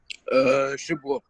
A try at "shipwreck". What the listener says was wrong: No W, okay? When you have W plus R, don't pronounce W.